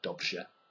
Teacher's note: If you try to combine a rolled R, so r, with a j sound, so say it very quickly together, rj. It's quite difficult.